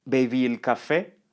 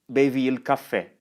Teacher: This is the same as the statement, bevi il caffè, but with raised intonation.